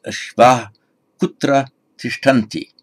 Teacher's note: Now, sandhi, nothing to be changed here. Because we get the a, long a with visarga, followed by an unvoiced consonant in the ka varga, so it remains unchanged